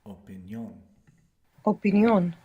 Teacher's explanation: Words ending ION are the same in English and Spanish. Just in Spanish, they have the accent on the end.